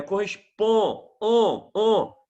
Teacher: Agora, o ON, vogal mais MON, eu falei para você que eu tenho um dígrafo vocálico. Eu não separo o som do N do som do O. Eu não falo correspondem, é correspond, on.